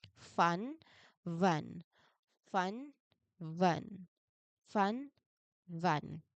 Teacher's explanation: For van, your throat should feel busy and buzzy the moment your teeth touch your lip. For fun, your throat should feel completely relaxed and quiet as the air hisses through.